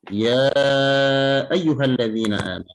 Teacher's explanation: Ya panjangnya 4 atau 5 harokat.